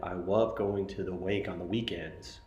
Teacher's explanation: One example of articulation might be that you have a student who is difficult to understand at times because he replaces the l sound in words with the w sound